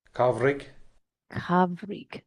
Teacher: Sort of halfway between a V and a W. · So the MH is becoming more a V sound.